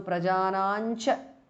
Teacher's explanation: Prajanam ends in anuswara and cha belongs to the cha varga. So the anuswara changes to nya, which is the nasal or the anunasika of the cha varga